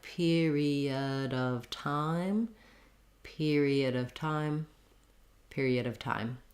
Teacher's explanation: time so you kind of have fast fast fast period of four fast syllables period of time and then time gets stretched out · our main length in that phrase is on the time period of time so you kind of have fast fast fast